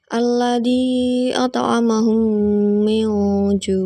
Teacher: cara membacanya adalah memasukkan huruf mim ke dalam huruf mim disertai dengan suara gunah sekitar dua ketukan atau harakat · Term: Idgham Mimi